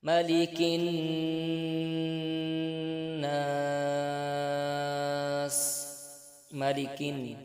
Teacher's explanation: نون مشدد کا غنہ ہو رہا ہے، نون پر غنہ کر کے پڑھیں گے، غنہ کی مقدار ایک الف کے برابر ہے، آخر میں مد عارض کا وقف ہو رہا ہے۔